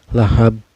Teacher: Mbak ya Hai yang disukunkan karena waqaf atau karena berhenti Hai cara bacanya ini dipantulkan dan pantulannya besar ya ini qolqolah kubro